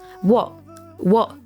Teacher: The T sound at the end of what is a stop T. We don't hear the full T sound here, just a pause.